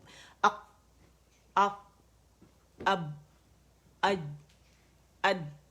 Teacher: کیونکہ air pressure اتنا زیادہ ہوتا ہے، آواز جب مخرج پہ جاتے ہیں تو آواز سخت و قوت کے ساتھ ٹھہر جاتی ہے، رک جاتی ہے، بند ہو جاتی ہے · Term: قلقلہ